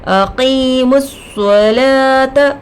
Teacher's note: صاد پر تشدید آ کر ہے، 2 مرتبہ پڑھیں گے، ایک پچھلے والے حرف سے، ایک خود سے